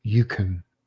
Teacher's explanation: a form of the the word can that has been reduced to a monosyllabic consonantal syllable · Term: weak form